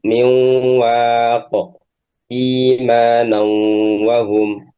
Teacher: huruf nunnya hilang tidak terbaca tapi sifat gunahnya tetap ada maka disebut nais. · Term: idgam naqis